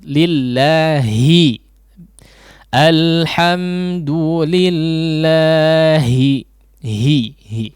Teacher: Tidak diikutkan si Khayshum ya. Rongga hidungnya tidak ikut.